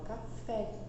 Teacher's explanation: Esse fé, que é o mais alto, a última sílaba ali, fé, é mais alta, tá? É mais forte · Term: sílaba tônica, oxítona